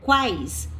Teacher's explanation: o U, ele tem um som mais fraco, então ele é semivogal. O A, ele tem um som mais forte, então ele é uma vogal. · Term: tritongo